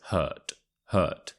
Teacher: quite a strong T at the end